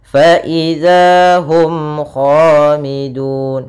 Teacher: suara mimnya harus jelas dan tidak boleh ditahan, tidak boleh hum kha, tapi langsung jelas. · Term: izhar syafawi